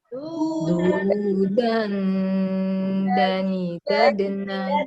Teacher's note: Dal pakai ujung lidah, kena gusi gigi saya.